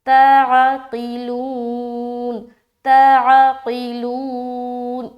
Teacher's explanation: یہاں پر قاف موٹا حرف ہے نا، اس کے نیچے زیر ہو، زبر ہو یا پیش ہو، کچھ بھی ہو، موٹا حرف کو موٹا ہی ادا کرنا ہے